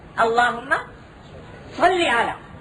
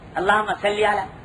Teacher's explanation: صاد ذرا موٹا کر کے نکالا جاتا ہے، سین ذرا اس میں موٹا نہیں ہوتا